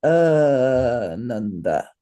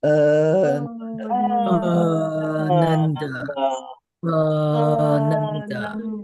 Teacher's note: the long mark over that first A means that you hold it for 2 beats · we want to hold the first syllable for 2 beats and the second syllable for 1 beat and the third syllable for 1 beat